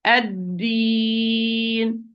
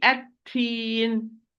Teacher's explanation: Dal is not whispered, it's apparent majhur.